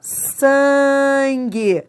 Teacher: Esse N nasaliza o A, não é? Então, é um dígrafo.